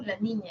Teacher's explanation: vas a decir la L, el aire sale por los costados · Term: laterales